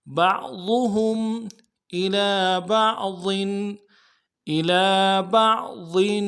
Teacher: الا میں حمزہ کے نیچے زیر ہے، نرم سے ادا کریں گے، لام کے اوپر کھڑا زبر ہے، ایک الف دار میں کھینچیں گے